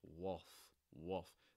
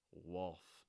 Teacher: It's not wolf, it's more wolf, wolf. That L is not actually pronounced. That's something you'll hear. It's more like a dark L sound